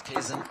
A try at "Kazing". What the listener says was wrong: I asked her yesterday, and I believe she told me it was pronounced Kazing. Zing. With a G sound on the end, yeah.